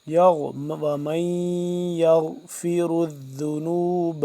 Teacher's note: غین موٹا را موٹا ذال کو نرمی سے پڑھیں گے